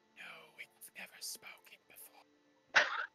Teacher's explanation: It's this very like wispy, airy, like breathy.